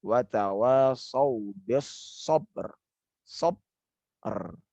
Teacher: sekarang dihilangkan qalqalahnya. Qalqalah dihilangkan, diganti dengan takrir. Takrirnya ro.